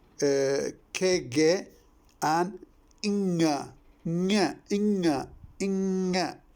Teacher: The k is voiceless, the ge is voiced, the inga is voiced. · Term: velar